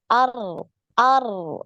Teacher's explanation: Nah, coba dikurangi. Jadi sekali, ya, sekali aja getarnya. Ar, ar. Nah, ini ngalir, suaranya ngalir, ya. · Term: getarannya sekali